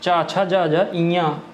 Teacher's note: चा, छा, जा, जा, इया, इनका उच्चारण स्थान ये भी तालु से होता है, तालव्य व्यंजन में आते हैं आपका।